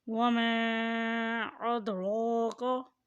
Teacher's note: دال کے اوپر جزم ہے اس لیے یہ قلقلہ یعنی دال کی آواز کو ہلا کر ادا کریں۔ أَدْرَاكَ، را کے اوپر کھڑی زبر ہے اس لیے اسے بھی کھینچ کر ادا کریں۔